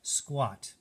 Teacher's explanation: it's not the long a but it almost is like a short o in there